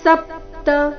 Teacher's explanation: ಸಪ್ತ ಸ ಮೇಲೆ ಆಘಾತ